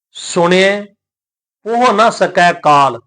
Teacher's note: ਪੋਹ ਨ ਸਕੈ ਕਾਲ ਇਹਦਾ ਉਚਾਰਨ ਸਾਧ ਸੰਗਤ ਪੋਹੇ ਨਹੀਂ ਕਰਨਾ ਜਿਹੜੀ ਹਾਹੇ ਦੀ ਸਿਹਾਰੀ ਲੱਗੀ ਹੋਈ ਹੈ ਇਥੇ ਇਹ ਸਾਈਲੈਂਟ ਰਹੇਗੀ ਇਹ ਉਚਾਰਨ ਦੇ ਵਿੱਚ ਨਹੀਂ ਆਏਗੀ